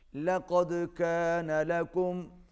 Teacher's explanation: کاف باریک اور دو نقطے والا قاف موٹا، دال پر قلقلہ ہوگا